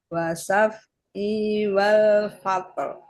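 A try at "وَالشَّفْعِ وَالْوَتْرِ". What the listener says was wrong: Ada shinnya, Bu. Shinnya ada tasdid jadi wasyaf'i.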